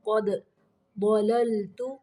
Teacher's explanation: ضاد کو موٹا پڑھنا ہے، لام کو باریک پڑھنا ہے